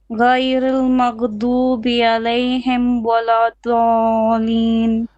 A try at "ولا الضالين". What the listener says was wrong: No, dalin, there's a mud here. This is 6 beats. You have to do it. ولا الضالين.